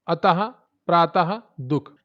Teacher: विसर्ग आती है, इसका उच्चारण हा के समान होता है